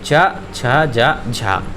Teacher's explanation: तो आपकी जो है स्पर्श संघर्षी कहलाती हैं चा छा जा झा